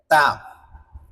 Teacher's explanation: তা উচ্চারণ করার সময় জিহ্বার আগাটা সামনের উপরের দুই দাঁতের গোড়ার সঙ্গে লাগাইবেন।